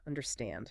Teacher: The stress is at the very end. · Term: syllable stress